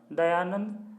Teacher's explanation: दया धन आनंद, दयानंद, आ मिलकर के दीर्घ आ हुआ है।